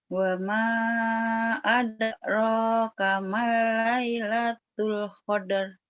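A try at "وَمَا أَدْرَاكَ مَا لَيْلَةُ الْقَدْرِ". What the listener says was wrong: kamanya jangan kamal, kama ya.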